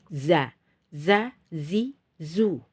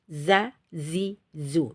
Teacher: Ketika kita menyebut huruf zai, itu udaranya harus ditahan, jadi tidak mengalir, ya. Ketika kita tes za, zi, zu, udaranya tidak boleh mengalir, tidak boleh z, za, zi, zu, atau sa jadi sin, ya. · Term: jahar